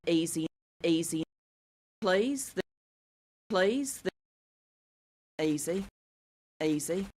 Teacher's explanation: front vowel that is called the fleece vowel right um so fleece is a high front vowel but our speaker realizes it in such a way that the vowel starts actually as a mid front vowel